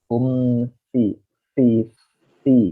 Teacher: huruf fa itu dia makhrajnya bukan di 2 bibir, tapi bibir bagian bawah nih ya, ke gigi atas.